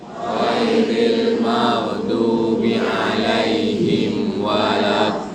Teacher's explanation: Dia tak boleh dengung, tapi kena tutup mulut. Hukumnya izhar syafawi. Mim huruf bibir, waw huruf bibir.